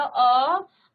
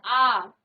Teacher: अ और उसी अ को हम खींचते हैं आ